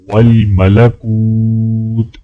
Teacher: کاف کو واو کے ساتھ ملاتے ہوئے ایک الف کے برابر کھینچیں گے